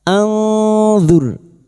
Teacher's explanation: Qala rabbi arini Berikutnya nun sukun bertemu dha, ikfa hakiki. Nun sukun dibaca samar dan mendengung selama 3 harokat